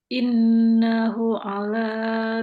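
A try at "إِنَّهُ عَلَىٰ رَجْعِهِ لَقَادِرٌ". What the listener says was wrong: panjang, punya panjang. Oke, ini disambung aja, Mbak Yanti, dihabiskan karena ini bukan tanda wakaf. Ini sebenarnya tanda huruf ya, ya sukun. Nah, jadi maksudnya kasroh kemudian bertemu dengan ya sukun, jadinya apa Mbak? Mad asli.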